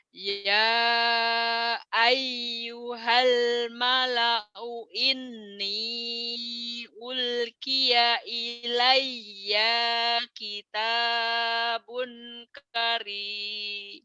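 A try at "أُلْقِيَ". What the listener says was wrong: bukan kok bukan coba lagi panjang pendeknya nggak belum beres belum betul Ulki. Kalau berhenti jadi ulki. Iya, jadi panjang. Kalau dari ini lebih bagus lagi ya. Ya, ya, ya ayyuhal mala'u inni ulqiya ilayya kitabun karim.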